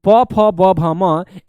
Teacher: इन तमाम वर्णों के उच्चारण स्थान जो होते हैं मेरे प्यारे बच्चे वो क्या होते हैं? ओष्ठ होते हैं।